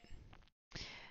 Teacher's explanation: Yeah, so this is a really pronounced Swiss accent, and you can clearly hear the harsh consonants and also the rolled R, which is very different from how in Germany they speak German, because there they don't do the rolled R.